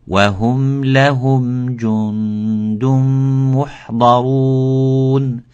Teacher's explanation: But hu, and then bring the mim, the position of the lips have to be as mute, not as mu. Because when you say hu, you will find out that the lips are going forward, and it's a little bit of difficulty to bring them back into the position of the sukoon.